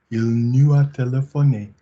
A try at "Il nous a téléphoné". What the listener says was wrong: Nice vowels. Can we have a little bit of a link between nous and a? A link between nous and a. Notice, interestingly, for whatever reason, the minute you added the z, your mouth made it nu, which is naked.